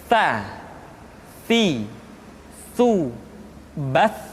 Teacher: ujung lidah disentuhkan dengan dinding dua gigi seri bagian atas